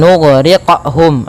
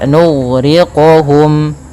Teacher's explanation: pantulannya jangan sampai menjadi pantulan yang saktah ataupun ada pantulan tambah Hamzah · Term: huruf Qalqalah